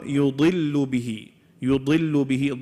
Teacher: Daad is a heavy letter. However, when it has a kasra, it's the least amount.